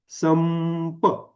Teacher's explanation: जीभ कुठेच टेकली नाही फक्त ओठ काय झाला ओठावर टेकला आणि नाकातून अनुनासिक निघाला